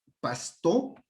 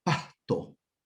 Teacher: O de pronto puede ser aspirada